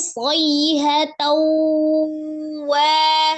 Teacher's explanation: Nun sukun atau tanwin bertemu dengan huruf waw adalah hukumnya idgham bi ghunnah. Idgham artinya dilebur, ditasdidkan ke huruf waw disertai dengan dengung ya. · Jadi ditahan sekitar 2 sampai 3 harakat, suaranya dimasukkan ke rongga hidung. Kemudian wanya mad ya, ada alif sebelumnya fathah.